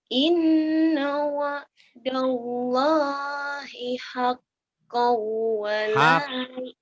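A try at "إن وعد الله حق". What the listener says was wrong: Hakku, bukan hakkau. Hakku ya non. Hakku wala yastakhiffannak.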